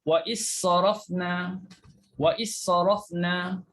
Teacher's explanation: Dal juga hilang kerana kita dah masukkan dalam huruf sad.